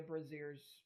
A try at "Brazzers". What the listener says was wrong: Brazzers, you mean? Yeah, it's Brazzers. Well, it doesn't have an I in it, so it's definitely Brazzers.